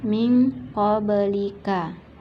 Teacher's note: nun sukun bertemu dengan qaf, hukum bacaannya ikhfa, maka nun sukunnya tidak dibaca jelas. Bukan min qablika, tetapi seolah-olah menjadi min, seolah-olah ada huruf eng, min qablika.